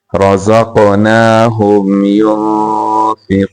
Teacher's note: را کو موٹا کرنا قاف کو موٹا کرنا اور یہاں پہ قلقلہ بھی کریں گے